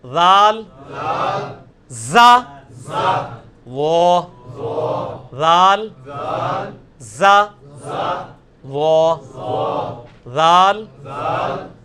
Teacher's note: یہ سیٹی کی آواز نہیں ذال میں آنی چاہیے, یہ نرمی والا ہے, یہ اس کے نیچے آیا ہوا ہے ذال, نرمی کے ساتھ ذال.